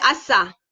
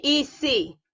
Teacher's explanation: nama dia frikatif, alveolar, tak bersuara